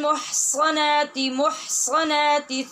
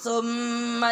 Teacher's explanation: दोनों की आवाज़ एक सी आ रही है, ये गलत है। स्वाद में तो सीटी की आवाज़ पैदा होनी चाहिए और सा को नरमी से बग़ैर सीटी की आवाज़ के पढ़ना चाहिए।